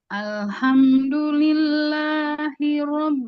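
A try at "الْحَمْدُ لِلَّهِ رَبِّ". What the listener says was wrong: Ah, itu bisa kalau dari hi-nya. Bukan bukan tersendat Ibu, karena Ibu kurang fokus pas udah masuk ke H. Terlalu keenakan di sini nih. Jadi pas waktu mau kena huruf H, harusnya di sini. Misalnya gini, Bu. Alhamdulillahi Rabbil Alamin.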